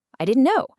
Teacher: If you're surprised, your pitch shoots up, and you say it faster.